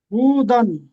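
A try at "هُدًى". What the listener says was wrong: হু বলে টান দিচ্ছেন কেন, হুদান।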